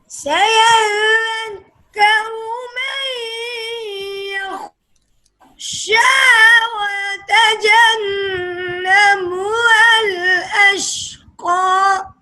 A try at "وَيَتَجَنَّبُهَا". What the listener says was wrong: یہ الف کیوں نہیں پڑھا وَيَتَجَنَّبُهَا ہے نا یہ آپ نے الف کیوں نہیں پڑھا